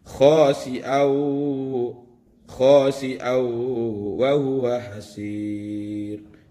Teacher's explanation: Tentu yang dimasukkan adalah tanwinnya, dimasukkan ke waw. Khasi'aw wa huwa hasir. Jadi dimasukkan dan didengungkan. Itu adalah bacaan idgham bi gunnah.